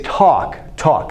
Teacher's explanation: this L in a word like talk, it has absolutely no consonant value